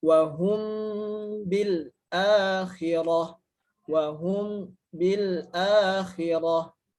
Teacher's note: hukum bacaannya adalah dengan mendengungkan huruf mim dengan tempo yang dipanjangkan atau ditahan lama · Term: ikhfa syafawi